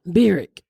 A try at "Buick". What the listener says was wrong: It's like the W and the R. It comes like her R's are W's. Boo. Bew. Like the Bew.